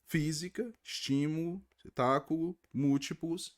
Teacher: não é a última não é a penúltima é a anti penúltima que é a mais forte · E nós temos também uma outra classificação que nós chamamos de proparoxítonas. Então não é a última, não é a penúltima, é a antepenúltima que é a mais forte